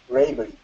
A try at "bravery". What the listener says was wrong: Yeah, very good. Your pronunciation is very good, actually.